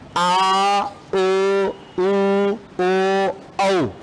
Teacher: जिह्वा का पिछला भाग सक्रिय रहता है, पश्च स्वर कहलाते हैं